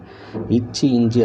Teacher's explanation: இச்சி, இஞ்சி ஆகிய 2 மெய்களும் நாவின் இடைப்பகுதி நடு அன்னத்தின் இடைப்பகுதியை பொருத்துவதால் பிறக்கின்றன